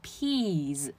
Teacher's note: 虽然拼的是 s，但是它发出来是 z 的音